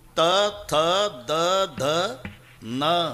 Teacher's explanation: जेव्हा संबंध दाताशी येतो ते दंते आहे. तथ दध न किती ताकद लावून धक्का मारते जीभ आतून दाताला. त थ द ध न पूर्ण लाईन हे दंते आहे.